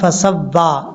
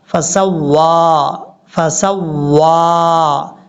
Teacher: سین کو واو کے ساتھ کنیکٹ کریں گے اور واو کو پڑھتے وقت ہونٹ گول کریں گے۔ کچھ لوگ پڑھتے ہیں فسوا، سوا نہیں پڑھنا، فسوا، فسوا، ہونٹ گول کر کے پڑھنے ہیں۔